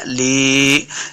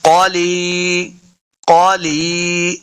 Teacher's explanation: یا مد ہے، اس کو دو حرکات لمبا کر کے پڑھنا ہے